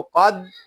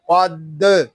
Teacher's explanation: دال حروف قلقلہ میں سے ہے اور یہ دال مشدد بھی ہے، اس لیے اس کو جماؤ کے ساتھ ادا کریں گے